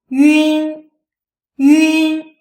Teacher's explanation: This sound is produced by pronouncing the simple final yu followed by the front nasal n.